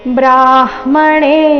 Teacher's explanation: ಬ್ರ ಆದ ನಂತರ ಮೊದಲು ಅರ್ಧ ಹ ಆಮೇಲೆ ಪೂರ್ತಿ ಮ ಬರಬೇಕು